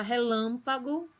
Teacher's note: na palavra relâmpago, o lam é a sílaba tônica